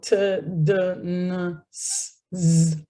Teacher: So t, d, n, s, z, again, all in the alveolar ridge. They're made by the tip or the blade of the tongue and the alveolar ridge.